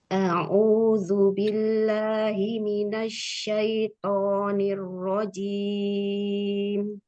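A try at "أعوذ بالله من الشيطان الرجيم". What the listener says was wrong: Hamzahnya mau lebih jelas. Tonya angkat lagi isti'lanya. Asyaitoni. To. Ti. Tu. Ato. Asyaitoni.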